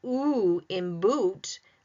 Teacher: When I say the ooh in boot, the tongue is back.